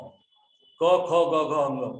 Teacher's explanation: पूरा क वर्ग जो है कंठ से निकलता है।